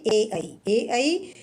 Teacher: ए ऐ कंठ और तालु दोनों से बोली जाती हैं